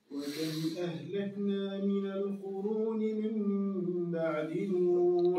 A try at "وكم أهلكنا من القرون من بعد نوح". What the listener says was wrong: والعين وين هي؟ من بعد باء. وين العين؟